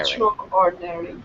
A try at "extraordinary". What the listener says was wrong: You're adding an extra. You're adding an extra syllable. Not extra or no. Extraordinary. Extraordinary.